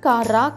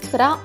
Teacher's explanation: C ఆర్ యొక్క శబ్దం మనం క ర అని కాకుండా క్ర అని తీసుకుంటాం గమనించండి శబ్దం క ర కాదు క్ర అవుతుంది కాబట్టి సి ఆర్ ఏ